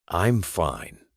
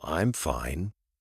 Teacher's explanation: But with a flat tone, it sounds serious, maybe even a little unfriendly. But if you add a little rise and fall, I'm fine, it suddenly sounds warm and welcoming. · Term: intonation